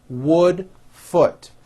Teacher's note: the vowel sound in wood is also a lower vowel same sound is in the word foot